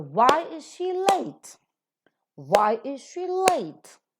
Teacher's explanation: Why being the interrogative pronoun is to be accented and late being the adjective is to be accented.